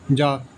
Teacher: सघोष अल्पप्राण में आता है ज